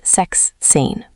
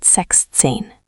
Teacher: Important, sechs loses the final s sound in the middle. Not sechszehn, but sechzehn.